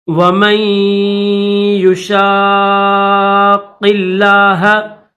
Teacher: شین کو قاف کے ساتھ ملائیں گے اور قاف کو لفظ اللہ کے ساتھ ملا کر پڑھیں گے ، کیونکہ قاف کے اوپر بھی تشدید ہے اور لفظ اللہ